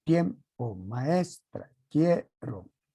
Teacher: son las que tienen la elevación de voz en la penúltima sílaba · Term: acento prosódico